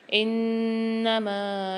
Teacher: یہاں نون پر مشدد ہے، غنہ کر کے پڑھیں گے اور میم کو ایک الف میں دار کھینچ کے پڑھیں گے۔